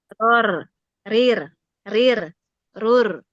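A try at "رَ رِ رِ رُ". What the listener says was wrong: Nah, roar dan rurnya belum tebal itu. Rirnya sudah tipis gitu. Coba ditebalin. Roar.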